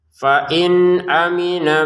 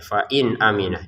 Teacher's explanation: Nah, ini fain nun sukun ni bertemu dengan hamzah. Kita bacanya dengan jelas ya. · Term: dibaca dengan jelas